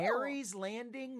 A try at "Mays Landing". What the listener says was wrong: There's no R in that. I can see that there's no R.